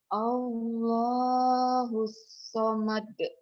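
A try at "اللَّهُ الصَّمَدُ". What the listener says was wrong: Sadnya nggak kedengaran nyutnya tuh. Sad.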